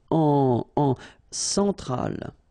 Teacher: E-N, nasal, so it goes in your nose